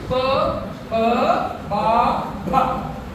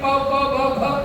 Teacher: So there's a lot of airflow in that. Pa, ba, bha. And you need to have the lips for that. So try not touching your lips and say pa, ba, bha.